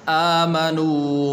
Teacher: حمزہ اس کے اوپر کھڑی زبر ہے تو اس کو آپ نے لمبا کرنا ہے، اسی طرح واو مدہ ہے تو اس کو آپ نے لمبا کرنا ہے۔